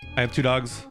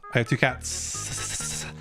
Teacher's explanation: So the G is voice and the T is voiceless. And so the S that you add at the end, it copies the voicing.